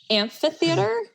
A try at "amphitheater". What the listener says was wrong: Amphitheater. Ampa, not ampy. You're hitting the I really hard. Amphitheater.